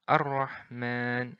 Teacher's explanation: Jadi bukan Al-Rahman tapi langsung melebur ke huruf ra. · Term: diidghamkan